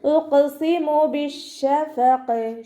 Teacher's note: ഖാഫ് കൽക്കലയുടെ ലെറ്ററും കൂടി ആയതുകൊണ്ട് ഫുൾ സുക്കൂന് കൊടുക്കാൻ ശ്രദ്ധിക്കുക.